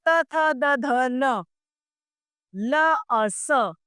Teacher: यह व्यंजन दंत्य कहलाते हैं।